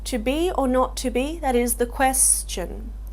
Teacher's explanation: so it's got a very falling sound and you almost feel um that he's hesitating or unsure about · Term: feminine ending